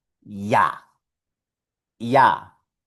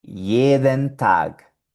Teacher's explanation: La J en alemán siempre va a producir un sonido de I, como nuestra vocal I.